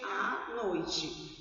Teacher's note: Esse A, ele é prolongado, ele é pronunciado 2 vezes. Não precisa ser de uma forma muito pausada.